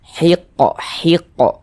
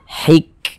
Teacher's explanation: huruf Kaf itu dia bukan huruf Qalqalah bukan namun dia memiliki sifat hams